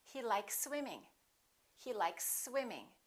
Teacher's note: you can prolong the s a little bit but don't pause don't interrupt the sounds · Here we have an S, likes, and here we have another S. When we have two same consonants, we only pronounce one.